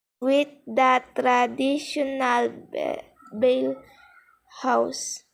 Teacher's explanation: She also omitted the s in the word house.